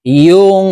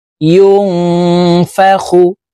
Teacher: নুন সেকেন্ডকে গুন্নার সহিত নাকের ভিতরে লুকাইয়া পড়তে হবে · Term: ইকফা গুন্না